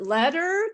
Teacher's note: usually the t in the in the middle is pronounced like a d